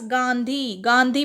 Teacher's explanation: गांधी में नाक और मुंह दोनों से आवाज़ आई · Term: अनुनासिक